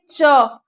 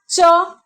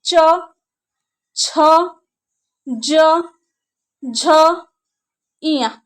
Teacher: जो आपका जीभ है वो आपके दांत के ऊपर आपके तालू में जाके चिपकता है। आप लोग बोल के देखिए, च तालू में जाके चिपक रहा है आपका जीभ।